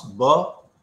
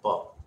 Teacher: when you pronounce the sound ba, as is used in baby, then you will hear a higher resonance. In pa, as used in pantalon, the resonance is lower.